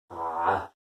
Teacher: Ah, tu viens la chercher, c'est pas un simple A, mais c'est un A que tu viens chercher dans le fond de ta gorge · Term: lettre de la gorge